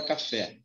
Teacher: O fé é a sílaba mais forte da palavra café. Então, se a última, ó, primeira e última, se a última é mais forte, eu tenho uma palavra dita oxítona. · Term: sílaba tônica